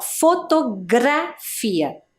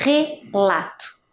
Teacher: a letra R no meio ali da palavra, ela teve um som, ó, fotografia, diferente da letra R no início, relato, né, que é um som mais forte